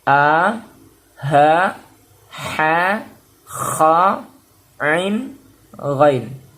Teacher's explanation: Semua ke-6 huruf ini letaknya ada pada tenggorokan ya, kerongkongan ya, di kerongkongan sini. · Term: huruf halqi